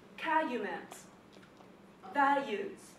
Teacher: people are saying calumet, values, they leave out the L.